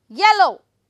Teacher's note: Yellow, first syllable will be stressed